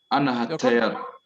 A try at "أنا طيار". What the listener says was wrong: Why do you say? Why do you put had Anna and Anna? Why ha? It's just Anna tayyar.